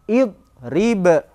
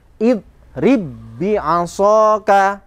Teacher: Karena diidghamkan, karena dimasukkan suaranya ba yang pertama pada ba yang kedua, diidghamkan, maka suaranya hilang itu. Dengan otomatis kolkolahnya tidak ada.